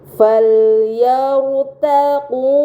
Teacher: ro sukun yang sebelumnya harakat fathah berada di huruf ya maka ro sukun tersebut harus dibaca secara tebal